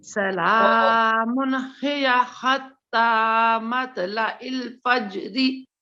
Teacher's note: हा को गले से निकालने की कोशिश कीजिए, ये मुफख्खम पढ़ा जाता है, मोटा